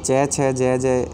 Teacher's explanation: ये तालु से उच्चारित होते हैं चारों, इसलिए इनको तालवी कहेंगे।